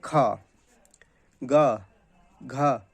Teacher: अब का वर्ग है तो का उच्चारण होता है कंठ से